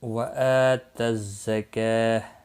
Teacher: وقف کی صورت میں گول تا ہا ساکن پڑھیں گے، وقف بالابدال ہوگا۔